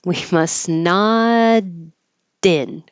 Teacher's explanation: And when you release the T, it is now a D because it's between two voiced sounds.